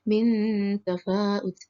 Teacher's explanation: ikhfa kerana huruf nun sukun bertemu huruf fa. Cara membacanya samar dengan dengun dan ditahan selama 3 harakat. Pada waktu mengucapkan huruf nun mati, sikap lidah dan bibir dipersiapkan menempati huruf fa.